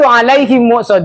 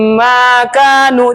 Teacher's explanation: bunyi mim dia dengan mim selanjutnya itu didengung didengungkan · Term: idgham mimi